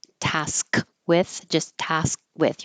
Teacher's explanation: I'll just put a little mark there for the K because you won't hear task with, just task with. Your tongue goes to the K position, and since there's a consonant after it, it won't release airflow.